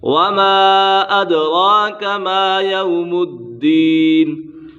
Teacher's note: حروف مدہ کے بعد حمزہ دوسرے کلمے میں ہو تو مد منفصل ہوگا، یہاں پر مد منفصل ہو رہا ہے، دال کے اوپر قلقلہ ہو رہا ہے۔ یہاں پر دال مشدد ہے، اسے جماع کے ساتھ پڑھیں گے اور دال کے اوپر قلقلہ بھی ہوگا اور مد عارض بھی ہوگا۔